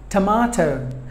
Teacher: This word contains three syllables, but the stress falls on the second syllable, ma